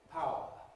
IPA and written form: ˈpaʊə (power)